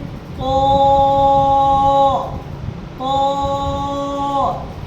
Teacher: ہونٹ کو گول کریں گے اور ہونٹ گول کرتے ہوئے موٹا آواز نکالیں گے